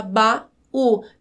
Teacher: cada vogal em uma sílaba separada em uma sílaba diferente por isso é hiato